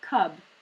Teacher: the letter u which we said was like an uh in the word cub so in this case it's actually like the schwa sound